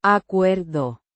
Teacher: with stress on the second syllable and a soft De.